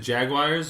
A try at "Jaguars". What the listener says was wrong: Like Gagwire is how you're pronouncing it, kind of? You just said in like a little French accent.